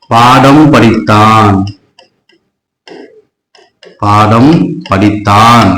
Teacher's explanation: மகர மெய்யெழுத்து அதோடைய மாத்திரை அளவு குறைந்து ஒலித்தால் அதுக்கு பேர் தான் மகர குறுக்கம்